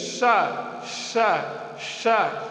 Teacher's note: इस सा का जब उच्चारण करते हैं जीभ ताल की ओर जाती है तो एक सीटी जैसे निकलती है, शा शा शा, तब एह सा की उत्पत्ति होती है। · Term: तालव्य सा